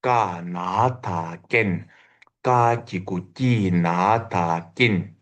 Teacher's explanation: second suffix ta is always silent. When you spell it, you have to read it, but it is silent when you pronounce it.